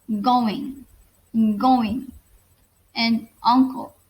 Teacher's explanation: velar, which is articulated by raising the back of our tongue towards the soft palate